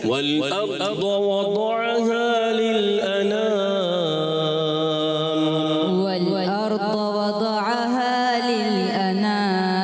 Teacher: ضاد کو اور زیادہ پر کریں گے۔